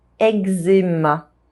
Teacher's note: The Z sound modifies the K sound and it becomes a G sound.